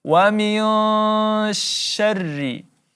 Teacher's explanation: nun mati bertemu huruf shin maka kita dengungkan 3 sampai 4 harakat, ikhfa hakiki.